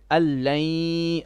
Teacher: The noon on the an we do not pronounce. This drops. We say allain, and then the second one is idgham with ghunna.